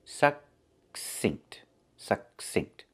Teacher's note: And the second C makes the s sound, like in star. The K is a stop K. We don't release it. We don't say k.